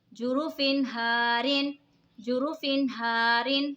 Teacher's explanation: जुरूफ़िन हारिन, जुरूफ़िन हारिन, दो ज़े की तनवीन के बाद हुरूफ़े हल्की का हार है तो इज़हार होगा यानी गुन्ना نہیں کریں گے، دو زیر کی تنوین کو ظاہر کر کے پڑھیں گے